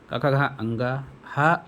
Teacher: क वर्ग क ख अंग ह और विसर्ग का उच्चारण स्थान कंठ से है